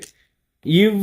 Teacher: இது மேல்வாய் பல்லின் கீழ் உதடு பொருந்துவதால் பிறக்கிறது அதாவது என்ன சொல்றாங்க அப்படின்னா இந்த பல்லு மேல்வாய் எண்ணத்தோட பல்லு இருக்கு இல்லையா